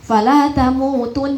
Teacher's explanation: fala tamutun ditahan ditahan paling tidak dua ketukan atau dua harakat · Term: ghunahnya